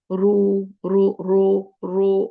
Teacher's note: मोटा हो तो वाव के साथ पढ़ना रू र रो रो और मुंह गोल कर लेना